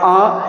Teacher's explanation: देखिए दोस्तों, जैसे इस पे हमने लगा दिया चंद्र बिंदु, उच्चारण करोगे तो हो जाएगा आ, यानी कि ध्वनि जो है मुख और नाक से बाहर निकलेगी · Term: अनुनासिक स्वर